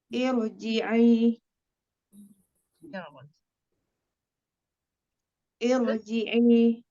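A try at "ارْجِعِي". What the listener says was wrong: Coba posisi bibirnya nggak usah maju Mbak. Irji'i.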